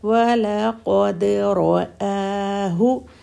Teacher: وَلَقَدْ قاف ہیوی اور را بھی ہیوی